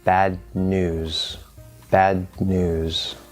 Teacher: if we say bad news we're not going to release it we're going to go into that d and we're going to sort of hold it there · the d and the n will sound like they sort of go on top of each other · the d is going to go here not touching the teeth and the n is also going to go in the same place t d and n share the same position and then what · We're going to go into that D, and we're going to sort of hold it there. And then we're just going to release the N through the nose. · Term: stacking